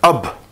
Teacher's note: now the ba doesn't have any fatha, kasra or dhamma, so it stops on the ba. No sound is carried forward. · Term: jazm or sukoon